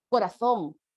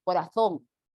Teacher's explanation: la hacen bien interdental la lengua entre los dientes